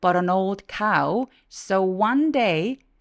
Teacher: one day 둘 다 강세를 살짝 주세요